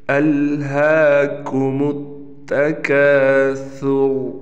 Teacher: सा को अदा करते हुए दोनों दांत जो सामने के ऊपर के दो दांत हैं और नीचे के दो दांत हैं उसमें हल्की सी ज़बान आनी चाहिए